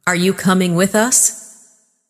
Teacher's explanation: Rising tone for question.